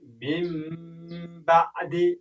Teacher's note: یا هم بل مثال وګورئ، من بعد لیکل شوی من بعد دی، اما ادا کوو من بعد د نون توری تبدیلوو د میم توري ته، ځکه چې د با توری راغلی دی له ساکن څخه وروسته. من بعد نه وایو، من بعد او غنه هم پکې کوو. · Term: اقلاب